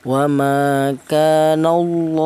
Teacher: Di mana lafal Allah itu di dal huruf yang berharakat fathah ini juga dibaca tebal atau dibaca takfim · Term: dibaca tafkhim